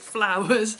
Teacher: in an Essex accent, people will extend the first syllable and then shorten the last syllable. So for instance, if you say flowers, well, you can hear me saying it, flowers.